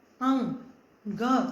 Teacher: अब यहाँ पे आप अगर देखोगे न, अंग, ग, आपके नाक जो है उसकी आवाज, आपको अपने नाक से उस आवाज को निकालने की जरूरत पड़ती है